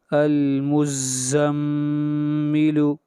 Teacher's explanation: حمزہ لام زبر ال، میم زا پیش مز، المز، زا میم زبر زم، المزم، میم زیر می، المزمی، لام پیش لو، المزمل۔ میم کے اوپر غنہ کیا اس لیے کہ میم مشدد کے اوپر ہمیشہ غنہ ہوتا ہے